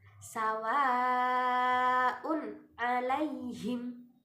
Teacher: bertemu dengan Hamzah dan satu kalimat atau kata cara bacanya dengan dipanjangkan lima harakat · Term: mad wajib muttasil